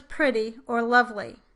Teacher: Your bias is probably to hear the E vowel in these contexts, but the vowel that is produced tends to be much shorter and more lax than a true E vowel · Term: I vowel